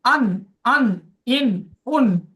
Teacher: নুন জিভের আগা এবং তার বরাবর উপরের তালুর সাথে লাগিয়ে নুন উচ্চারিত হয়। জিভের যে আগা আছে তার বরাবর উপরের তালুর সাথে নুন, আন, আন, ইন, উন।